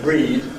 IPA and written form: riːd (reed)